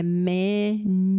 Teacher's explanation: Você consegue entender bem que o U fica com o som de IU, né? É manufacture.